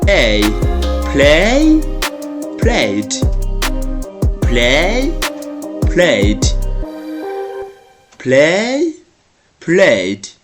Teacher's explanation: when they are followed by ed, we just pronounce d, only d.